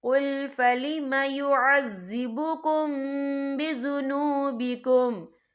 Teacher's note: یا دیکھیں قُلْ فَلِمَ يُعَذِّبُكُم، یہاں میم ساکن ہے، میم ساکن کے بعد جو ہے با آ رہا ہے، تو یہاں پر اکفا شفوی ہوگا، اور ہم یہاں غنہ بھی کریں گے، اور غننے کی مقدار جو ہے 2 سے 3 سیکنڈ ہوگی.